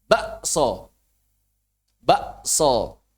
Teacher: Kalau orang Jawa, tengah Jawa Timur, ibdal. K-nya diubah jadi hamzah.